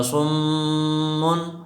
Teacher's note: صم میں میم مشدد ہے تو اس میں غنہ ہوگا